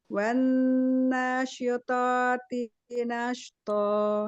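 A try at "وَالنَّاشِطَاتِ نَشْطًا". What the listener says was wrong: Syito. Nah, tebalkan lagi toknya. Wan nasyitati nashta. Nashto. Nah, rokhawahnya sempurnakan zaman rokhawah pada shinnya gitu. Kalau pelan-pelan dia bisa. Walaupun nggak pelan banget ya, cuman dia ada waktu untuk memberikan mustahak pada hurufnya, sifatul hurufnya. Wan nasyitati nashto. Nashto.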